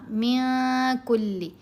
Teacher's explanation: تو یہاں سے پڑھیں گے، یہاں ہم نے کیا احفا، من کلی، من کلی نہیں پڑھا، نون ساکن کے بعد کاف ہے، کاف حروف احفا میں سے، تو ہم نے نون کی آواز کو ناک میں چھپانا ہے